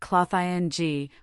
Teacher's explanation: Clothing is pronounced cloth-ing, with stress on the first syllable.